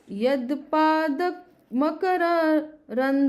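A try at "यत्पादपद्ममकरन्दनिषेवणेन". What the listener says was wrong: अरे आप सुनिए पहले, वर्ड मिस हो जा रहा है। यत्पाद मकरंद नहीं, पद्म है बीच में। यत्पाद पद्म मकरंद निसेवनेन,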